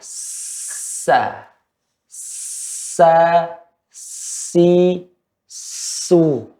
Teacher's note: Dan suara jangan ya mengenai dalam gigi seri atas dan bawah, tapi ujung gigi seri atas dan bawah. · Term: huruf sa